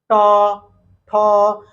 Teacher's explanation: हमारी जीभ मुड़ रही है और मुर्धा में टच हो रही है